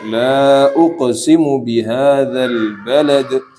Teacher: Nah, di situ la panjang ya. Di situ panjangnya dari 2 sampai 5.